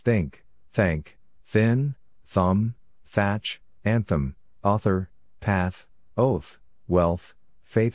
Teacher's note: it's made by placing the tip of the tongue behind the Upper Front Teeth and the sound has just one spelling th think thank thin